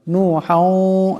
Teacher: এখানে হার উপর 2 জবরের তনবিন, এরপর ওয়াও আসছে, ইদগাম হয়ে যাবে, ইদগামের একারে পরিমাণ গুণনা হবে